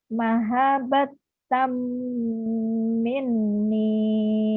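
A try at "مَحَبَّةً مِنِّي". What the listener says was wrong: Aminnya udah benar, di mahabnya kurang. Mahabbatam. Mahabbatam minni. Gunanya mana? Ini Bu, gunanya mah nun doang. Mim ini nanti hukum lain. Ini namanya gunah. idgham bigunah. Karena ini tanwin. Tanwin ketemu mim jadi idgham bigunah. Gunanya nun nih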